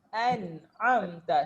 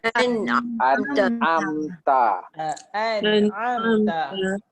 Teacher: Jadi perkataan ni dia an'amta siratal ladzina an'amta. Hamzah dulu baru ain.